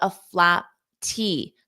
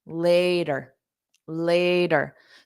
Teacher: so you just don't push out that puff of air so it doesn't create a pause